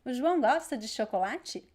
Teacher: there's an emphasis in the verb and then at the end of the word chocolate.